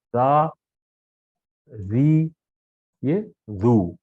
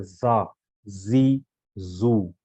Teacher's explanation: زال آتا ہے اس کے وقت زبان کی نوک آپ باہر لائیں گے تھوڑی سی اور دوسرا جو یہ والا زا ہے اس کے وقت زبان کی نوک باہر نہیں لائیں گے لیکن آواز میں شدت رہے گی جس طرح کہ آپ جہاز